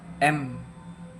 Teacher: Nah, demonstrasinya itu tutup mulut ucapan ee coba ucapkan m ee udara pasti keluar dari hidung